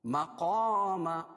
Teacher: قاف حروف مستعلیہ میں سے اس کو موٹا پڑھیں گے